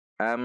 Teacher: Hamzah berupa Alif fathah masuk ke mim tasdid am ada gunah dua harakat